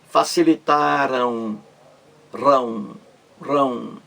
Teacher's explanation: O verbo facilitaram aí termina em ditongo nasal. Facilitaram, rão, ditongo nasal. O ar também ecoa pelo nariz